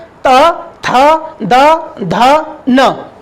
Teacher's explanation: क्योंकि इनको बोलने में इनको उच्चारित करने में हमारे जीभ का अगला वाला हिस्सा दांतों से स्पर्श करता है। इसलिए इन पांचों को दंत व्यंजन कहा जाता है।